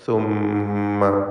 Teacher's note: ഷദ്ദുള്ള മീമിനെ മണിക്കുക, ഉന്നത്ത് നൽകി ഉച്ചരിക്കണം. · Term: മീം മുഷദ്ദദ